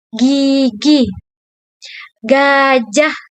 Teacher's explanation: Bunyi G contoh katanya gigi dan gajah. Yaitu bunyi letupan lembut di tenggorokan